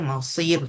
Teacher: kena tebalkan bunyi sad kalau tak tertukar dengan bunyi sin